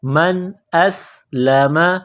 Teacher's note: حمزہ کو سین کے ساتھ ملانا ہے، پلس کرنا ہے، سین میں سیٹی کی آواز پیدا کریں گے